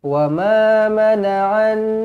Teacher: pastikan cukup 2 harakat dengung, jangan kurang daripada 2 harakat. Pastikan dengung cukup 2 harakat.